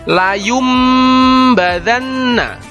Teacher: nun sukun atau tanwin dengan bunyi huruf mim sukun disertai mendengung nun sukun atau tanwin nya diganti menjadi Bunyi huruf mim sukun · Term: iqlab